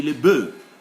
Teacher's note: When it is one, we say le bœuf. When there are many, we simply say le bœuf. We don't pronounce the F.